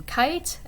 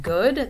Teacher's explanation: other velar sounds would be k as in kite. It's a voiceless sound. G as in good. That's a voiced sound. So k and g are counterparts.